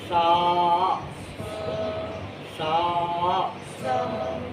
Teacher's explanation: सामने के ऊपर के चार दांत और जुबान का कोना सिर्फ मामूली सा टच होगा।